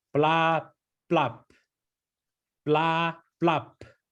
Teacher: It's not really a BL sound. It's more like a very, very, very soft PL sound